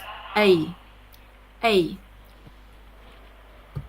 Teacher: To say this sound, say a long E sound followed by a very short I sound. Two sounds together and don't say them separately. · It starts with E and moves to I. It's pronounced A. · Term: diphthong sound, diphthong